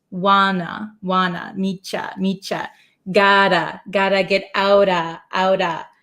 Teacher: So instead of ooh, we just drop our jaw.